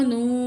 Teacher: मीम ज़बर मा, नून पेश वाव नू, वाव साकिन इससे पहले पेश है, वन काउंट खींचेंगे, वाव मद है